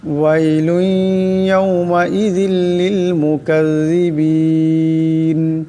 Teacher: লামের উপর দুই পেশের তুনবিন, এরপর ইয়া আসছে, এখানে ঈদগাম হয়ে যাবে, ঈদগামের একালি পরিমাণ গুন্না হবে।